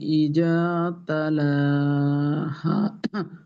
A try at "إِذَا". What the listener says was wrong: ইজা যেন হে না যায়। দেখেন, ই একটা হলো জা আর একটা হলো রা, রাল। তো এই জালটাকে মাখরাজে রাখতে হবে। ইজা, ইজা তালাহা, ওয়াল কমারি ইজা তালাহা।